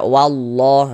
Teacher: Di sini tanda baca fathah, maka lafaz Allahnya dibaca tebal, huruf lam jalalahnya dibaca tebal